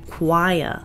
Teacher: We also hear a w sound followed by an I sound, choir. Since is British, he doesn't pronounce the r at the end, choir.